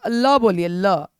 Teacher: जीभ जो है ना वो साइड वाला क्या होता है ना उठ जाता है और साइड से हवाए निकलती है साइड से निकलने का मतलब प्रसर्किल मतलब पीछे तो जब भी